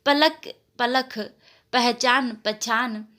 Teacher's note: कहीं कहीं अल्प प्राण ध्वनियों का महाप्रमाणीकरण भी होता है